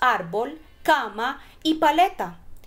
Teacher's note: en este caso todas las palabras graves van a llevar el acento en la penúltima sílaba